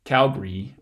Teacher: lot of people who are from Calgary actually say it Calgary with two syllables and that schwa gets eliminated altogether